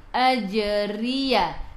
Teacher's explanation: ra baris bawah kena baca dengan nipis. Kita senyum.